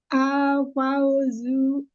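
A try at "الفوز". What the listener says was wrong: Jangan zu, jangan ada hamzah. Al-fawzu.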